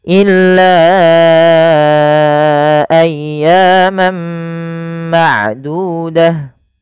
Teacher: panjangkan lanya sepanjang 4 harakat karena ia ada bacaan mad jaiz munfasil yang dimana adanya mad tabi'i bertemu dengan hamzah atau adanya hamzah yang terletak setelah huruf mad.